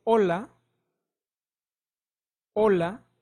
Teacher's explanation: so the H is totally silent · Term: letter H